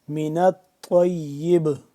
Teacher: قلقلہ یہاں پہ کریں گے یعنی کہ آواز کو پلٹائیں گے، ساکن حرف کو ہلا کر پڑھیں گے. جب یہ ساکن ہو گیا با، اس کو ہلا کر پڑھنے کو کہتے ہیں قلقلہ.